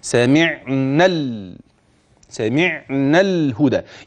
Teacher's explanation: يبقى اخر الف في كلمه سمعنا حذف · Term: التقاء الساكنين